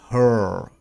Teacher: we don't pronounce that r sound